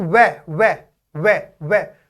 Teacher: जैसे मैं बोलूं वे वे वे वे, तो निचला होठ है, ऊपर का दांत है, तो इसके उच्चारण में निचला होठ और ऊपर का दांत प्रयोग होता है। इसके उच्चारण में जो ध्वनि निकलती है वो निचले होठ और ऊपर के दांत से निकलती है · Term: दंतोष्ट्य